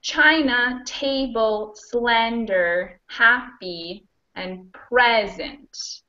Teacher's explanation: all of those two syllable nouns and adjectives are stressed on the first syllable